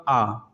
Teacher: जब आ बोलते हैं तो आपका पूरा मुंह खुलता है, इसलिए हम इसे विवृत वर्ण कहते हैं